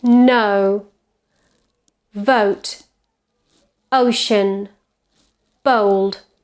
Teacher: it's quite central because it starts with a schwa quality and goes towards oh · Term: Diphthong O